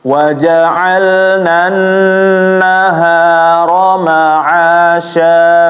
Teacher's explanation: nun bertasydid ditahan, jangan buru-buru ya